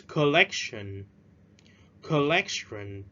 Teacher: Don't forget to stress at the second syllable. Nhấn ở âm tiết thứ hai.